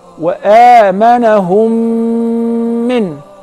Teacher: if the first mim is non-vowel or sakina, followed by a voweled mim, so I will merge the first in the letter and I will pronounce them as one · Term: al-mim as-sakina